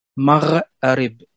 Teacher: Deux R qui se suivent, ce qui n'est pas possible en français